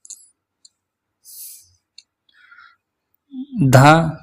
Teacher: महाप्राण है और घोष भी है और दंत है।